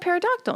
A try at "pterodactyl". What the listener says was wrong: Yeah, because it's a silent P. Pterodactyl.